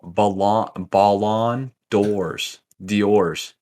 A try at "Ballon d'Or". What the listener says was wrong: The Ballon d'Or. No, you just said blonde door. You said blonde door.